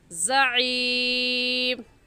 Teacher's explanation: زا سیٹی والے حروف میں سے ہے، زا کی جگہ زال نہیں پڑھیں گے